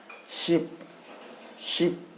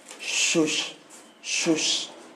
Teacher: यानी कि जब इस सा को हम लोग एज ए प्रोनाउंसिएशन यूज करेंगे तो हमारा जो टंग है ऊपर वाले जॉ के हिस्से को, ऊपर वाले जबड़े को टच करता है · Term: तलब्बे सा